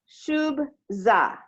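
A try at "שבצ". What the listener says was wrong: Shub tsa. Less of a z sound. Shub tsa. Shub tsa.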